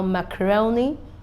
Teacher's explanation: we have the primary stress at ro, and we have the secondary stress at ma.